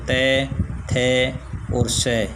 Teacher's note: त जो है वो जब बोलते हैं तो जीभ जो है वो दांतों के नीचे अंदर वाली तरफ तालव के पास टच होती है, इसलिए इसको दंत्य कहते हैं।